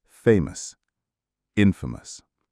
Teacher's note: The stress for both words is on the first syllable, famous, infamous.